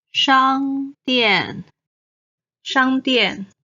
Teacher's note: 商 is the first tone. 店 is the fourth tone.